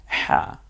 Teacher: এই হাটা কণ্ঠনালীতে চাপ দিয়ে উচ্চারিত হয়, একটু ফ্যাস ফ্যাস আওয়াজে হা